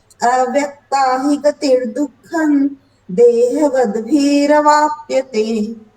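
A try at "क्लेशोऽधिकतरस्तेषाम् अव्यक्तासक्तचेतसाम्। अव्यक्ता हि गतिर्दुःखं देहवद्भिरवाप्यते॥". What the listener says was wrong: सही पढ़ रही है, लेकिन खाली अक्षर सब ना ना हलंत लगा दे रही है। पूरो पूरो पढ़नो पड़ेगो, ठीक है ना। हलंत लाग जा रह्यो है।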